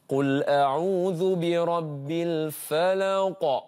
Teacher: Surah Al-Falaq ni dia belakang dia semuanya qalqalah.